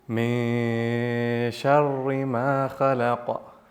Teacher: The noon is still there, right? But veiled from full appearance. And this is ikhfa.